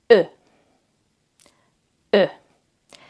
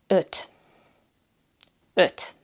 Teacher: This sound doesn't really exist in English. Maybe when you say her or curl, similar, but it's a bit more round in Hungarian.